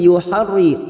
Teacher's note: Yuharri masuk kata huruf ro yang bertasdid. Yuharri ro kita baca tarkik karena berharakat kasrah